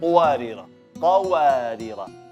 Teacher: qa fathah jelas, baru masuk waw